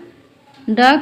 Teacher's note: ड का उच्चारण स्थान मूर्धा है। इसका मतलब है कि इसका उच्चारण जीभ के मध्य भाग को मूर्धा यानी सिर के ऊपरी भाग से स्पर्श करा के किया जाता है।